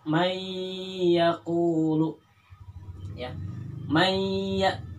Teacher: Contohnya dalam kalimat mayyaqulu, seolah-olah ini digantikan nun itu dengan tasydid yang ada pada iya ya, tetapi bacaannya idgham kemudian mendengung. Contoh dalam kalimat mayyaqulu ya, mayya, di sini seolah-olah di iyanya itu ada tasydid.